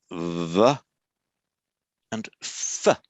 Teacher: The only difference in v and f is that with v, the vocal cords are vibrating. That's why it's called voiced, I mean the vocal cords are vibrating.